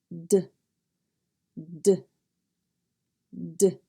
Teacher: To make the sound D, you open your jaws and lips slightly. Place the tip of your tongue on the top of the roof of your mouth behind the top front teeth. Move the tongue down as you blow air out of your mouth.